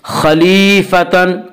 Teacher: یا مدہ کو 1 الف کے برابر کھینچ کر پڑھیں گے۔